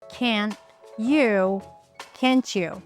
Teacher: So instead of pronouncing two sounds, we pronounce just one sound and that sound is ch. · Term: fusion